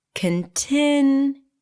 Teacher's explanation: The primary stress here is on the second syllable.